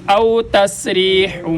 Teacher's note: سین کو ادا کرتے وقت بھی سیٹی جیسی آواز آنی چاہیے